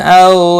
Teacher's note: واو لین ہے، تھوڑا نرمی کے ساتھ کھینچ کر ادا کریں گے